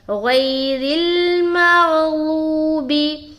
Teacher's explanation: تو غین بھی موٹا اور ضاد بھی موٹا. مغلوبی, غوبی, واو مدہ کرتے ہوئے بی.